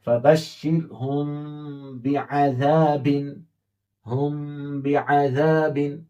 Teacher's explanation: میم ساکن کی آواز ناک میں چھپا کر غنہ کے ساتھ پڑھیں گے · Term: اخفا